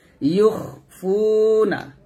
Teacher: লাক লাক একসাথে আর আবার ইউখফুনা, ইউখ ইউখ ইউক বলবেন না, আমরা নাকি খটাকে কাফের মতো উচ্চারণ করি, কাফ না এটা খ